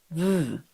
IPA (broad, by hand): ð